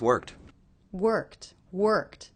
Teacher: finally we have the intonation of the voice going down at the end so we know period end of the sentence end of the